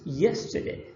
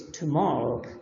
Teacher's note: the word yesterday, it's stressed in the first syllable, in tomorrow in the second